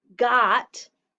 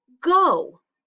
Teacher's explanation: vowel sound is o so this word is go see that when it's closed in it says ah got but when it's open it says oh go